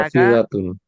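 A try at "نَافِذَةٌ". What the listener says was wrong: দুই দাঁতের আগার সাথে লাগে। নাফিজাতুন, নাফিজা, জাতুন, জাতুন না, জাতুন না, নাফিজাতুন নরম করে, ঠিক আছে, জিব্বার আগা সামনে উপরে দুই দাঁতের আগার সাথে লাগে। নাফিজাতুন। এই জালের মাখরাজটা,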